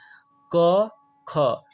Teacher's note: क और ख का जब उच्चारण करेंगे तो दोस्तों गले में कंपन कम होगा